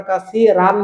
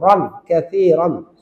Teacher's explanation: আমরা কাসি রান বলবো না, যেহেতু দুই জবর আছে, র অ ধ্বনি দেব